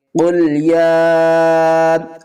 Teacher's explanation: قل یا ایہا الکافرون، قاف کو پر پڑھیں گے، قاف لام پیش قل، یا کھڑا مد زبر یا، قل یا کے اوپر کھڑا زبر بھی ہے اور مد بھی ہے، چھوٹی مد ہے، 3 الف کی مقدار کھینچ کر پڑھیں گے